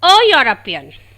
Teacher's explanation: E is a vowel, but it gives the sound of yo, which is a consonant sound. So, we are using article a before the word European.